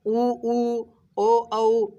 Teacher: गोल हो रहा है ना, वृत्त यानी गोल, गोला की तरह होता है ना, वृत्त की तरह मुख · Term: वृत्तमुखी